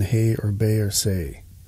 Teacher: a combination of two separate vowel sounds in this case it's the most common diphthong in the english language denoted as e i as in hay or bay or say it involves the upward movement of the tongue to complete the · it involves the upward movement of the tongue to complete the vowel